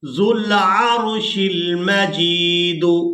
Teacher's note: ہم نے اس واو کو ادا نہیں کرنا، یہ واو صرف رسم الخط ہے، اس کو ادا نہیں کریں گے۔